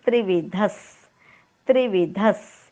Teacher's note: विसर्गाच्या पुढे जेव्हा स येतो तेव्हा विसर्गाचा उच्चार हलंत स केला जातो. उच्चार होईल त्रिविधस.